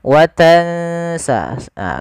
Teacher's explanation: kita langsung bacakan nunnya ke makhraj daripada huruf sin. Huruf sin itu ujung lidahnya. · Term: ikhfa